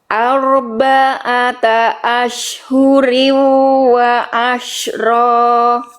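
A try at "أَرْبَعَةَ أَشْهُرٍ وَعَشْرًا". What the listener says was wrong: Keren. Sekali lagi bagus.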